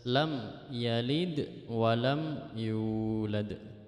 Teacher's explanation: Nah, itu ada dengungnya, itu tidak boleh. Jadi mim mati harus dibaca jelas